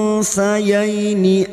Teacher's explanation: nun sukun bertemu sa, ikhfa hakiki, kita samarkan bunyi nun sukun dan mendengung selama 3 harokat